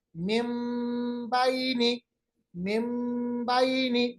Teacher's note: नून की आवाज को बिल्कुल हमने मीम में तब्दील किया है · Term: इकलाब